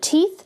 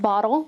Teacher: We also talked about the letter ta, and ta is like the frontal T sound in the word teeth. It is not like the flap in the word, like the word bottle